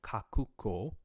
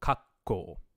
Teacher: you have another kanji which is KO and so Kaku KO rather than kakuko because of devoicing it would become kakko and that just Glides into kakko right so this coup drops